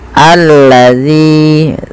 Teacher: panjangkan zi 2 harokat karena mad tabi'i